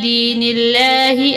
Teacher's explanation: دین اللہ میں لام کو باریک پڑھیں گے